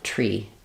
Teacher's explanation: need it you can just use the aspirated T tree so making sure that there's release of air before your are